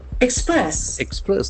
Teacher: There are two syllables. Accent falls on the second syllable.